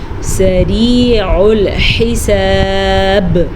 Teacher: وقف کی وجہ سے با پہ ساکن ہو جائے گا تو با پہ قلقلہ پیدا ہوگا۔